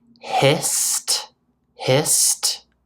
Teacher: So this is a little more complicated, but if a word ends in a voiceless sound, such as hissed, hissed, the s is voiceless. I don't use my voice box to make it. It ends with a t sound because t is voiceless.